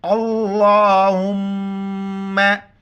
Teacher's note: लफ्ज़ अल्लाह से पहले ज़बर है, लफ्ज़ अल्लाह मोटा पढ़ेंगे